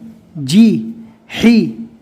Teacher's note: ہا کو حلق سے ادا کرنا ہے